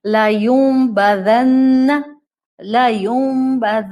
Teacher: آپ نون پر 2 کاؤنٹس کا غنہ کرتی ہیں. نون مشدد قرآن میں جب بھی آتا ہے آپ اس پر 2 کاؤنٹس کا غنہ کرتی ہیں، لا یوم.